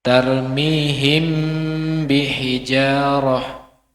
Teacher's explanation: mengucapkan suatu huruf mim sukun dengan sifat kondisi antara izhar dan idgham tanpa tasdid serta tetapnya pada huruf pertama · hukum ini sering disebut Ikhfa Syafawi karena mim dan ba makhrajnya adalah bibir yang mana asyafawi Berasal dari asyafah yang berarti bibir tempat terjadinya